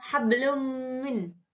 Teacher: ayat ke-5 lafal hablum Min dinamakan idghom bighunnah sebab jembatan and bertemu dengan huruf mim cara membacanya dengan mendengung